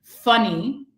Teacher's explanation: It's labial dental. It's a fricative because I can continue the sound, right? But when I put my fingers here, I feel no vibration. · when I put my fingers here, I feel no vibration. Nothing. So it's voiceless. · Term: F sound